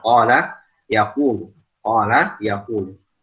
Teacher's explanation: Ketika dhammah misalnya kita lafaz qala jadikan fi'il mudhari yaqulu. Jangan sampai dhammah pada huruf qaf ini lebih tebal daripada harokat fathah pada qaf di lafaz qala. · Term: huruf isti'la